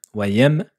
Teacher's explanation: Ne dites pas deux fois la lettre mim, la lettre m.